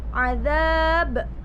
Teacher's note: Lalu azab, di situ ada mad tabi'i, kemudian ada qalqalah kubro sebab ba di situ waqaf dan dibaca sukun karena waqaf. Jadi dibaca qalqalah kubro, mental.